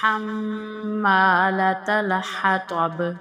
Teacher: ہا کے بعد میم پر غنہ کریں گے